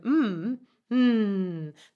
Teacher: if I said an M the sound is exiting through my nose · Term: nasality